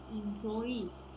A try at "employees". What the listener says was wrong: So avoid saying employees. It should be employees. Employees. Employees. Don't separate the plo and ease. It's just one syllable for employees.